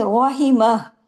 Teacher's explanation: रो heavy पढ़ा जाएगा जबर की वजह से